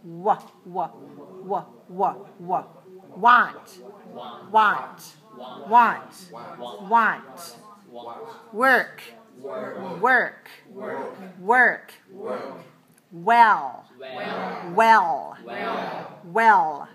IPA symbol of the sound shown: w